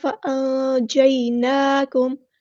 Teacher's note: نون پہ کھڑا زبر ہے، مد اصلی کریں گے، الف کے برابر لمبا کریں گے۔ میم ساکن پر اظہار شفوی ہو رہا ہے، ٹائم نہیں دیں گے۔